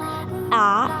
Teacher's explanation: is fully open and front